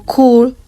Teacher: cool, is articulated further back because the k is followed by the back vowel